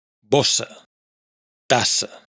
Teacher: En cambio, cuando hay dos s, estas dos se refuerzan mutuamente, de forma que el sonido S vuelve más marcado y más fuerte, sin hacer vibrar las cuerdas vocales